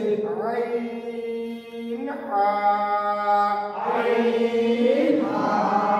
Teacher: 2 নম্বর মাখরাজ, হলকের মধ্যখান হইতে